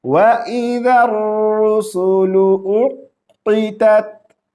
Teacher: حمزہ کو قاف کے ساتھ ملائیں گے